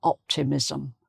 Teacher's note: the extra vowel sound comes between the s and the m